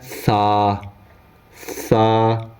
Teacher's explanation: 3 ڈاٹ جس کے اوپر ہوں وہ سا کہلائے گا۔ اور زبان کی نوک جب انہی اوپر کے اگلے دونوں دانتوں کی نوک کی طرف والے آدھے حصے سے لگے تب جا کے ادا ہوتا ہے سا